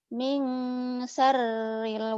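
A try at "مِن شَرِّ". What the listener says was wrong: Shin. Min syar. Shin. Kurang. Min syarril.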